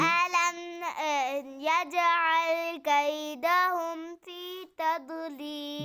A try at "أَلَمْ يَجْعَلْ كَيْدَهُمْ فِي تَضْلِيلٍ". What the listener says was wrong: ضاد कलकला नहीं करना तضलील